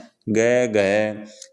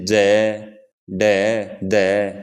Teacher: घोष में जब तीसरा चौथा पंचम वर्ण बोला है ग घ जैसे ज ड द तो इनमें अपना जोर पड़े है और कंपन भी होवे है